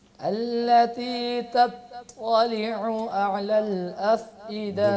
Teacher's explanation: التی کو کتنا لمبا کرنا ہے؟ زیادہ لمبا کر دیا آپ نے، صرف ایک الف